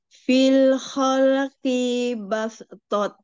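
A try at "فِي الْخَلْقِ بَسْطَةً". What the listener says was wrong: Fi-nya pendek. Fil khalqi bastoh. Bastoh. Kinya pendek aja, jangan dipanjangin. Toh, tak marbutoh itu kalau berhenti jadi H ya,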